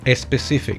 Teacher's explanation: my brain tries to compensate for the lack of vowel at the beginning of the word normally resulting in adding that non-existent vowel